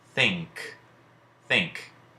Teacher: that letter N is actually corresponding with the sound we associate with the digraph NG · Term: ng sound